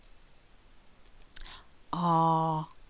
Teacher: The mouth is very open. Ah, the lips are rounded, so open and rounded, and the tongue is at the back of the mouth.